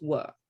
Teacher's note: you kick out all the r's you don't pronounce them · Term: rhotic